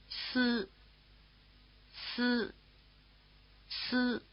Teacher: The tongue position for this vowel is very close to the tongue position for S.